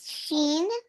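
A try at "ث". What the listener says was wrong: Three dots, ये अभी पढ़ा आपने, शीन थोड़ी बोला था आपने, क्या बोला था ये सेम है। सा, बा, सा, और ये?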